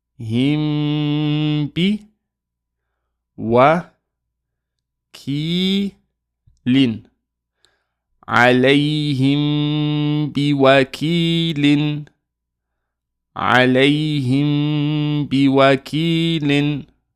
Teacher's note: So basically, if we have Meem that has a Sukun, and after it is either a Meem or a Ba, we're going to hold Ghunna. We're going to hold that nasal sound for 2 seconds